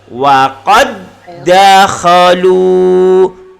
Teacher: seharusnya dal mati itu ada qalqalah sughra, tetapi karena dia huruf yang sama, maka qalqalah hilang. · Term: idgham mutamasilain